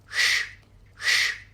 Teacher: The next consonant, sha is a deeper sound. The tip of the tongue is curled in towards the roof of the mouth and the air is reflected off the roof. It is a murdhanya or a retroflex sound.